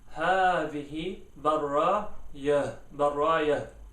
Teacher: you gotta make sure that you pronounce the ha quite deep or relatively deeply. You don't want to overpronounce it, otherwise it might sound a bit weird. · your pronunciation will change from a ta into a ha when you stop